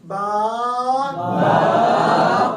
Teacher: با کے لیے جیسے ہونٹ بند ہے ایسے کھول دیں گے